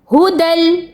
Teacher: دال کا لام میں شامل ہونا کہلائے گا ادغام